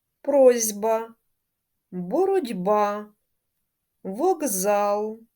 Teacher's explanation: глухі приголосні дійсно перед дзвінкими вимовляються як дзвінкі